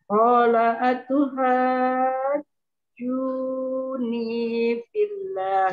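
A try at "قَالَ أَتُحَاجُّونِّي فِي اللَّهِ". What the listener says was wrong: Salah. Hajjun. Nunnya juga dengung.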